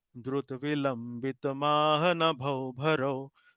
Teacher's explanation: In Indra Vamsha, it will be Guru, Guru, Laghu. So this is one very identifying feature of Drut Vilambit, that first three syllable are all laghus. These are all short sounds.